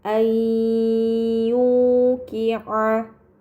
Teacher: nun sukun dibaca secara melebur dengan gunah yang dipanjangkan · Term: idgham bighunah